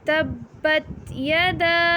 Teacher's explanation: یدا کو ہم 3 الف کے برابر لمبا کریں گے کیونکہ دال کے ساتھ الف ہے اور الف کے اوپر چھوٹی مد ہے، اور چھوٹی مد کو ہم 3 الف کے برابر لمبا کرتے ہیں۔